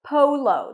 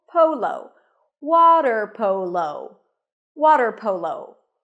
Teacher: The stress is on the first syllable, polo.